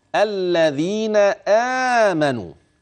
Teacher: اللام مدغمه وطرف اللسان في الذال